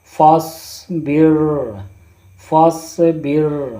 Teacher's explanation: یہاں پر صاد کو موٹا کر کے پڑھیں گے